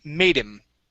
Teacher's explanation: you had used a Spanish D